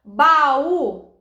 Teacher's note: Isso é uma vogal tônica de hiato. A gente tem um hiato entre o A e o U.